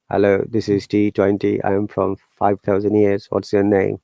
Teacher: That robotic voice, which doesn't change at all, we call it monotone.